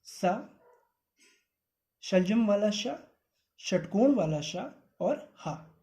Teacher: इनके उच्चारण में हवा की मुख में रगड़ खाने से ऊष्मा निकलती है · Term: ऊष्म व्यंजन